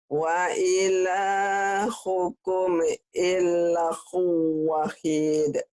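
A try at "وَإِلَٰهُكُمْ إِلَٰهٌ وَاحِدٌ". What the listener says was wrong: udah pinter, tapi kurang neken nih Bu. Nih maksudnya apa sih Pak Ari teken nih Bu? Ini kan ada yang patah berdiri nih panjang. Tekan di sini. Tekan di sini. Tahan. Tekan tahan.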